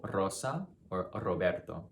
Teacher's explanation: You also have a light roll when there is an R at the beginning of a word.